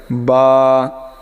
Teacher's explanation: দুই ঠোটের মাঝখান থেকে উচ্চারণ হবে বা অর্থাৎ দুই ঠোট একত্রে করে তারপরে বা তারপরেরটা দেখেন তা।